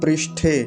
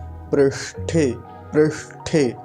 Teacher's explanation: ऐसे है रिकार, पृष्ठे ना कि पृष्ठे। और बीच में मूर्धन्य शकार हलंत है, आधा है